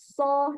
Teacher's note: dia seperti ada desis yang keluar ada desisnya terlebih dahulu ketika Kita mengucapkannya contohnya huruf Shad dan Sin SH jadi harus ada desisnya terlebih